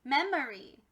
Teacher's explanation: instead of it being a long o or a short o it's actually an uh sound and that makes it a schwa so